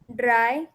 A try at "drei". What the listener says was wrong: अ, ड च्या ऐवजी ना द कर द. हा, ड्राय, फिअर,